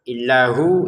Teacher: kita baca hu panjang dua harakat ya